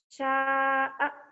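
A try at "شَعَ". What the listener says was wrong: Gak ada yang panjang, enak aja. Keenakan panjang. Ini gak ada panjangnya. Sya'a gitu ya.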